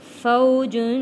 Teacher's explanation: واو ساکن سے پہلے زبر ہے، حروف لین، جلدی اور نرمی کے ساتھ ادا کرنا ہے اور تنوین پہ غنہ ادا ہوگا۔